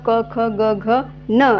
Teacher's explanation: पडजीभ आणि जिभेच्या मागच्या बाजूचा वापर होत असतो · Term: कंठवर्ण